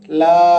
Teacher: একালি পরিমাণ টান দিতে হবে